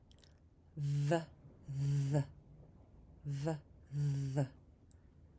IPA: ð